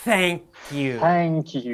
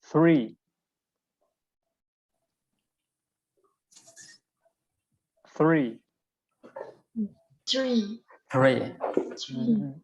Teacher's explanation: my tongue feels very fat, and I'm blowing the air through my top teeth. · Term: soft th